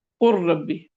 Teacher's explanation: कलमा तो है कुल और आगे है रब्बी, लेकिन यहाँ लाम साकिन है, इसलिए रा में इसका इदगाम हो जाएगा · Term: इदगाम ताम